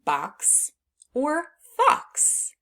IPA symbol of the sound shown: ks